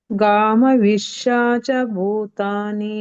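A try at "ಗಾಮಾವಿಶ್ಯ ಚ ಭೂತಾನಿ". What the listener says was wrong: ಗಾಮ ಮತ್ತಿ ದೀರ್ಘ ಇದೆಮ ಗಾಮ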